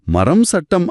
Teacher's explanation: மரம் அப்படின்னு சொல்லும்போது உங்க உதடுகள் மூடிக்குது. அதை தொடர்ந்து சட்டம் அப்படின்னு சொல்ல உதடுகளை திறக்கணும்.